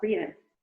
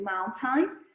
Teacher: Você dá aquela engasgadinha no som do T do written e no som do T do mountain. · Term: glottal stop